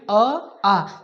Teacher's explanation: तो अ आ का उच्चारण कहां से होगा कंठ से होगा